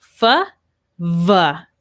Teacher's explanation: So the V is the voiced F sound.